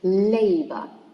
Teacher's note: labor, stressed in the first syllable because it's a noun that contains 2 syllables, so it should be stressed on the first one.